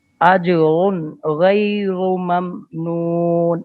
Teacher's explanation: गैरो रा पुर है, गैरु ममनून अजरुन की रा भी पुर है